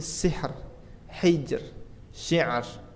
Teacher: didahului oleh huruf sukun sebelumnya kasrah seperti sihr, hijr syiar tipis